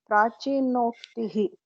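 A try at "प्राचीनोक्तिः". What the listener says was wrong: So Okara. Very good.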